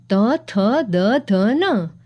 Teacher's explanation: આનો ઉચ્ચાર કરતી વખતે જીભ દાંતને અડે છે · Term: દંતવ્ય